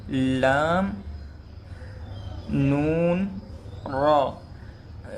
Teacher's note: یہ تو تینوں حروف زبان کے کنارے اوپر والے دانتوں کے مسوڑوں سے ادا ہوتے ہیں۔